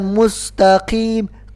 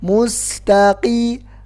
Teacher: Kemudian mustaqim, qafnya juga. Jadi qaf itu enggak ada hamasnya. Jadi bukan mustaqim, enggak ada ke-nya.